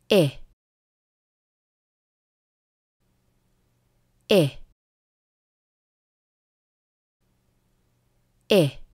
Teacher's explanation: кончик языка у нижних зубов тела языка высоко язык напряжён губы широко улыбаются краткий звук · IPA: [ɪ]